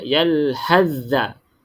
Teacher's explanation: S ni kita tak boleh bunyi langsung. Sebab kena masuk idgham kamil, sempurna. Kita masuk dengan sempurna.